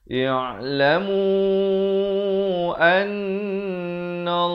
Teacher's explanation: Mu dibaca 4 atau 5 harakat, an itu didengungkan 2 harakat, la itu dibaca 2 harakat dengan tebal.